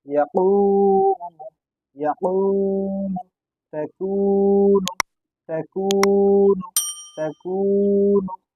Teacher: পেশের আওয়াজ সামনের দিকে যায় এবং ঠোঁট দুটি গোল হয়